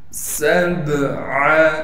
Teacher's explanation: ألم تروا كيف خلق الله سبع، سین کو باریک کر کے اور سیٹی ادا کر کے پڑھیں گے، سین کو با سے ملائیں گے اس لیے کہ با ساکن ہے اور با حروف قلقلہ میں سے ہونے کی وجہ سے با پر قلقلہ کیا جائے گا